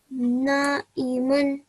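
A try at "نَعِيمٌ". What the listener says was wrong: This is elongated for 2 seconds. Try again.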